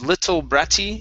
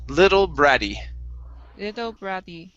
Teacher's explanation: let's switch these double t's to flap t sounds